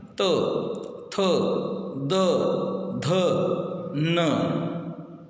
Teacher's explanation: दंतेय मतलब दांत को यूज़ करना पड़ता है उसको, जैसे कि त, देखो आपकी जो जीवा है, जीवा ऊपर के दांत को लगती है